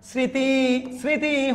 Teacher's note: মফলা আছে এটা উচ্চারণ হচ্ছে না